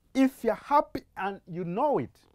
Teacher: we'll instead insert this glide w, and altogether the two words will read as know it